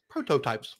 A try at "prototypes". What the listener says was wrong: Like a robot. Prototypes. You pronounced every T in that word.